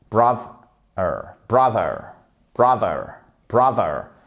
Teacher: Vous faites le th en fait en première syllabe et c'est ça c'est accentué avec le th. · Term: Accentonique